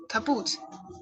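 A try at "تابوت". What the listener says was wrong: Taboot. Taboot. Very good. Very good. Perfect.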